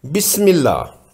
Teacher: اب دیکھتے ہیں کہ حرف لام میں ترقیق یعنی باریک پڑھنے کی مثالیں کیا ہیں۔ بسم اللہ، اسم جلالہ سے پہلے میم مکسور ہے، یعنی میم زیر والا ہے، اس لیے قاعدہ کے مطابق یہاں لفظ اللہ کا لام باریک پڑھا جائے گا